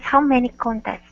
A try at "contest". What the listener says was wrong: Okay, instead of contest, contest. Okay, open your mouth up just a little bit more. So instead of contest.